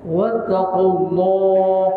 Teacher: Allah dibaca dengan tebal sebelumnya baris depan